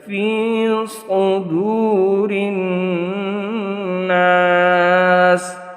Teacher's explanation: یہ واو مدہ ہے، اس کو ایک الف کے برابر کھینچ لیا جائے گا